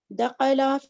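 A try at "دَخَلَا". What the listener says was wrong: दखला, ठीक है, थोड़ा लंबा करके बताएं वरना दखला ही बन जाएगा, ठीक है।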